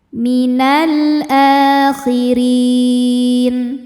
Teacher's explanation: A a hukumnya mad badal sebab ada hamzah yang dipanjangkan. Cara bacanya dipanjangkan a-nya dua harakat. · Huruf ra dibaca secara tartik karena harokatnya di bawah yaitu harokat kasrah. Cara bacanya ditipiskan.